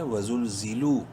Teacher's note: لام کو لمبا کریں گے ایک الف کے برابر واو مدہ کی وجہ سے